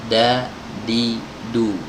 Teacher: kalau huruf D itu dalam bahasa Indonesia itu biasanya ujung lidahnya ditempelkan ke gusi ya